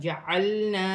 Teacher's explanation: الف مدہ بن رہا ہے، ایک الف سے پہلے زبر ہے تو الف مدہ بن رہا ہے، ایک الف کی مقدار کھینچ کر پڑھا جائے گا